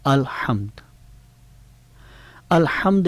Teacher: الحمد میں ہا جو ہے، ہا درمیانی حلق سے ادا ہو رہا ہے